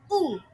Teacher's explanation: Vokal U diucapkan dengan menaikkan pangkal lidah setinggi mungkin sehingga tercipta pula bunyi U.